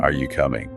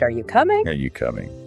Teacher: try saying it with your voice going up at the end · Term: rising intonation